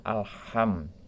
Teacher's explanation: Lam mati yang terdapat pada alif lam itu jelas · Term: alif lam komariah